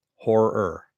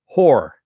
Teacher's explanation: you actually have two R's, two R sounds, two hard R sounds.